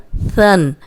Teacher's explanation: یہ نرم حرف ہے، اس میں سیٹی کی آواز بالکل نہیں آئے گی۔ اوپر سامنے کے جو دو دانت ہیں ان کے کنارے پہ زبان رکھ کے ادا کریں۔